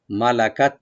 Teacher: মা লা, মা ওপেন, লাম ওপেন, কাপটাকে ওপেন রাখবেন, আর তাটাকে আমরা একটু হামস করব, একটু হালকা হাওয়া যাবে, মালাকাত এভাবে বলবেন, মালাকাত।